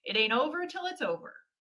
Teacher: We go up in the middle and then back down when we say that expression. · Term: intonation